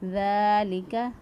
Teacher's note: ذال کو نرمی سے ادا کیا، ذال کھڑی زبر دا، ایک الف کے برابر لمبا کیا